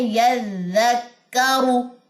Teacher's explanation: را کی پیش لمبی نہیں کرنی